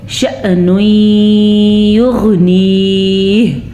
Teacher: یہاں بھی ادغام بالغنہ ہو رہا ہے کیونکہ نون تنوین کے بعد یمون میں سے یا آیا ہوا ہے، اور اسی طرح یغنیہ آخر میں ہا کی آواز ضرور آنی چاہیے